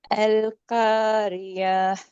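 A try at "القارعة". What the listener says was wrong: ம். கல்காரி யாக்கு போகுது ஐன் வரல. இல்ல அல் கோரியா.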